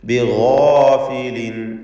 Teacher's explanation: ഇസ്തിഅലാഇൻ്റെ ഹർഫായ ഗൈനിനും അതിൻ്റെ ദീർഘാക്ഷരമായ അലിഫിനും തഫ്ഖീം കൊടുക്കുക. ബിഗാഫിലിൻ, തൻവീനിനെ അമ്മ എന്ന് ശേഷം ഐന് വന്നതുകൊണ്ട് ഇൽഹാർ ഹൽക്കി നൽകി തൻവീനിനെ വെളിവാക്കുക.